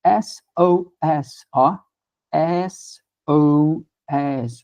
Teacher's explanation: O primeiro sonzinho é o som do e aberto